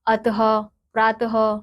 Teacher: विसर्ग का उच्चारण ह की तरह होता है जैसे हम बोलते हैं ना अह तो इसका उच्चारण ह की